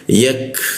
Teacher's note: Huruf K itu posisinya di siku tenggorokan ya. Lidahnya kita turunkan sehingga ada hembusan udara ketika ka dimatikan.